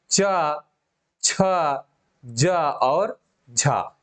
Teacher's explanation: च, छ, ज और झ। ये चार जो है ये स्पर्श संघर्षी व्यंजन कहे जाते हैं।